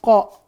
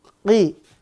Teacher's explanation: 1 makhrajnya pangkal lidah bagian bawah. Sifat ada 3. Memantul, napasnya ditahan dan tebal. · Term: huruf qaf